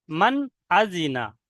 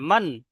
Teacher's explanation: এই নুন সাকিনে কে নাকের মধ্যে আওয়াজ তোলা যাবে না, মান গুন্না করা যাবে না, ভুল হবে। নুন সাকিনের আওয়াজকে জাহির করতে হবে। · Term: ইজহার